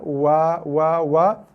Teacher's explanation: Dua lagi huruf, iaitu huruf wa. Keluar daripada dua bibir tapi tak ada sentuhan.